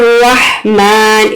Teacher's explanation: ہا جو ہے وہ مڈل تھراٹ سے ادا ہوتی ہے۔ رحمان، اس کو ہا نہیں پڑھیں گے، کبھی بھی اس کو ہا نہیں پڑھیں گے کیونکہ اس سے معنی فاسد ہو جائیں گے۔